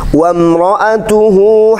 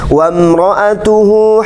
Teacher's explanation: ada mim yang bertasydid sama dengung itu namanya ghunnah